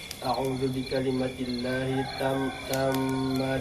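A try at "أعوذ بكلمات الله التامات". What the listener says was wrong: Ulang. A'udzu bikalimatillahi, ta'nya panjang. Tammati.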